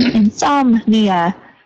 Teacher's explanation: So no extra vowel sound after the som, insomnia.